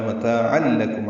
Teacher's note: عین تنوین ہے اور اس کے بعد لام آنے کی وجہ سے ادغام کامل ہوا ہے · لام آنے کی وجہ سے ادغام کامل ہوا ہے، متاعا لکم عین وسط حلق سے ادا کریں گے